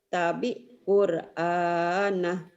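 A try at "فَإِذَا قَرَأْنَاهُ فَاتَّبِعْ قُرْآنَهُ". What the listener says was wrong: Tak bagus cuma ainnya hutangnya ain mati nih. Ain mati bacanya gini Pak, Bu. Faida qara'nahu fattabir Qur'an. Tabir kayak keselak loh. Tabir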